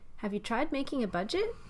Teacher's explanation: note that this is a question so you need to use Rising intonation